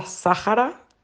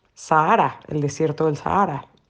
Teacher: en España lo pronuncian como una esdrújula y además, extrañamente, la H, que en este contexto normalmente es muda, aquí por alguna razón se pronuncia como una J suave